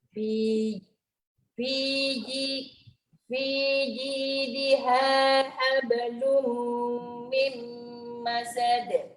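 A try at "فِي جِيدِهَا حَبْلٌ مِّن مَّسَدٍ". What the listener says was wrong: Jangan tutup mim, nak mimma. huruf ba, hablun.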